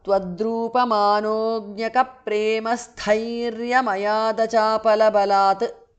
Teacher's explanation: The t in the end changes to d because of sandhi.